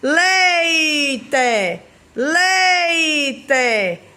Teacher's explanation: Primeiro o E vem com força, depois vem a semivogal, aí já diminui, ó. Leite. A boca fica mais aberta, depois diminui. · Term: ditongo decrescente